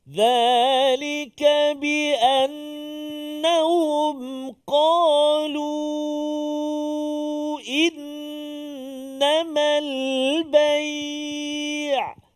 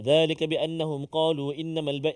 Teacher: Nun yang bersabdu, dua harakat. Wajib al-gunnah, wajib kita kena dengungkan. Jangan kita baca cepat.